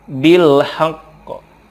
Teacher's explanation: Karena qaf ini ada qalqalahnya, ditekan kemudian dipantulkan.